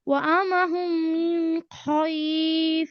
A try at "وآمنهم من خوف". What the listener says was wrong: হয় কেন আপু? হয় পরে ওয়াও, খাউফ। وآمنهم من خوف।